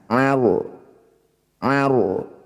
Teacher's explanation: ro-nya harus dibaca dengan tafkhim atau tebal. Angkat ujung lidah sampai menempel di langit-langit lisan.